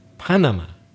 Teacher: we stress the first syllable we say Panama in Spanish you stressed the last syllable but